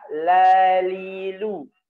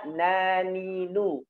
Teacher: Jadi la itu di gigi, sedangkan na itu di gusi